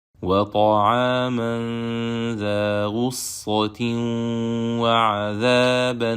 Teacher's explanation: we will merge Noon Sakina of Tanween into the following letter, Waw, with prolonged Gunna, as it is from set B where the Tanween is sliding, and the following letter is from Yarmulun.